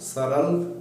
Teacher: दांत से और मसूड़े से बोले जाते हैं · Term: वत्स व्यंजन